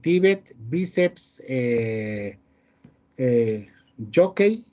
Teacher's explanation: llevan la sílaba tónica en la penúltima sílaba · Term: palabras graves o llanas